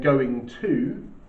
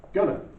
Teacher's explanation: rather than saying going to, says gonna. Okay? And from that we get a bit of his American accent.